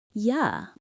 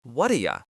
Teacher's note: Because you is not the most important word in the sentence, we weaken it. We turn it into a schwa sound, that lazy sound. So you becomes ya.